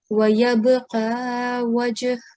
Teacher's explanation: you have to do a soft jerking sound on this ba sakin and the jim sakin as well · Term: qalqala